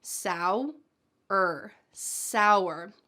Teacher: It almost sounds like there's a W in the middle of this word.